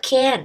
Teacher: The consonant n is one of nasal consonant, so we say that it nasalizes the vowel e to be canned. So the vowel e is influenced by the nasal consonant n to be nasalized. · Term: nasalization